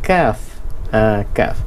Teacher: Pangkal lidah, dia bukan pangkal dalam, pangkal lidah, huruf kaf. Perasan dia akan bunyi keluar, dia dekat dengan lidah yang kat dalam tu.